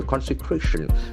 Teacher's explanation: That accent falls on the 3rd syllable.